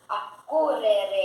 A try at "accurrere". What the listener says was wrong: Você esquece pedaços de verbo.